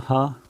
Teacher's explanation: हा बोलेंगे तो देखेंगे आपकी कंठ से ही आवाज़ आ रही है